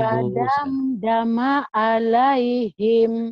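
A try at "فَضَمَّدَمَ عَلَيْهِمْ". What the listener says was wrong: lupa lagi dia fadam dama alaih, makanya pendek bu, fadam ya. dama alaihim segera bu, ayo Fadam dama alaihim. Ibu tadi kayaknya ketahan di sini. Fadam dama alaihim. Fadam dama alaihim. Fadam dama alaihim. Fadam dama alaihim. Fadam dama alaihim.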